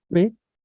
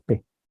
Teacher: La oposición entre consonantes glotalizadas, P, y no glotalizadas, P